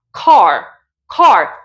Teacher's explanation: Este sonido de la A es una A, como la diríamos en español, pero redondeado. No voy a decir A, voy a decir O, O.